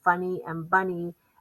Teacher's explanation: The unaccented syllable with the Y is carrying that long E sound.